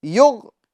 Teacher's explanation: غین کو ہمیں پور کرنا ہے کیونکہ یہ حروف مستعلیہ میں سے ہے